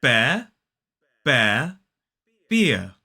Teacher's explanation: notice that in all three of these words when they're isolated we do not pronounce that R